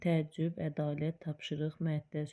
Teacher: Vurğu son hecaya düşür. Təəccübdə ün üzərinə düşür, məəttəl sonuncu ən üzərinə düşür, tapşırıqda sonuncu ədalətdə də ən üzərinə düşür.